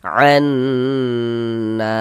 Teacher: kita ghunahkan bagian annya itu suaranya itu kita tahan, kita panjangkan sejenak. Anna na dibaca panjang. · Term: gunnah musyaddadah